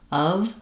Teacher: Also, often the word of, people don't realize that it has a schwa, and a v sound, of. They might think of the letter F saying the F sound like in off.